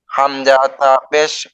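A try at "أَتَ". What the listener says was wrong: আপনি হামজা তা পেশ বলতেছেন কেন? এটা তো জবর। পেশ, কিন্তু হামজার উপরে তো জবর না।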